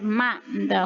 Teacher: Saat kita mengucapkan mim, bibir kita menempel